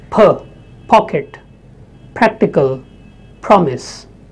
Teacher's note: Now in Indian languages, we don't have that aspirated variety of English. In English, we have a little touch of H after P.